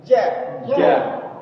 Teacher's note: tengah lidahnya tuh ketemu langit-langit langit-langit di atas